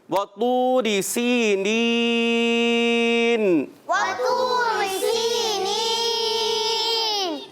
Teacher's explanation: سین کو سیٹی کے ساتھ اور حرف مدہ ایک الف کھینچیں گے.